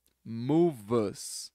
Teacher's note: ele já emenda o V com us